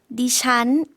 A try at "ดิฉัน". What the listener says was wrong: 네, 니찬이라고 발음해 주셨는데요. 는 내려가는 일성 발음이고요. 잔이라는 거는 삼성과 같이 올라가는 발음으로 해주시면 되겠습니다. 네, 원래는 이게 사성 발음이 아닌가 하시는 경우가 있는데요. 네, 일성 그리고 삼성 올라가는 발음으로 해주시면 되겠습니다.